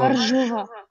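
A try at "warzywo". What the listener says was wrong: Только R не читается, ва-живо.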